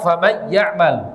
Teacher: harus disertai suara dari rongga hidung enggak boleh ditekan